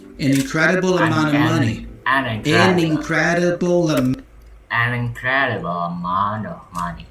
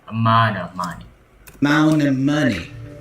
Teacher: The T goes away, I pronounce the N instead. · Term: NT combination